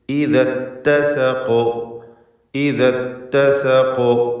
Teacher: ഖാഫിൽ വഖഫ് ചെയ്യുന്നു. ഖൽഖല കുബ്ര നൽകി അതിനെ ഉച്ചരിക്കുക.